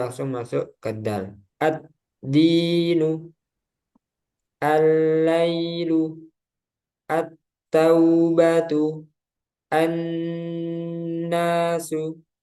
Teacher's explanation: jadi lamnya nggak dibaca lagi, nggak terbaca, langsung ke huruf yang kedua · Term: asyamsiyah